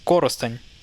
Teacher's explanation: Instead of saying Korosten, you say Korosteny. But emphasis is actually on the first syllable here